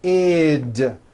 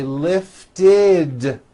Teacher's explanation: If a word ends in a T or a D sound, we add the ending id, which is a vowel I followed by a D, which is voiced.